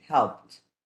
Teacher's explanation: Helped is a verb that in the past, the pronunciation should be helped, because all the verbs that end with P sound when you add ed, the simple past, that ed has to sound like a T